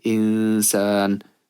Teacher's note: I'm going to bring out that Ghunnah sound, which extends for one alif long. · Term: ikhfa